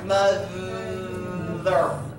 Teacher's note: When you say the th in mother, can you hear, feel your tongue vibrating on your top teeth? Your top teeth vibrating on your tongue? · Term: voiced